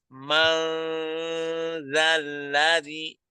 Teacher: Ma itu kita baca dengan ikhfah ya. Jadi dia samar. Mangzalladzi, jangan mang.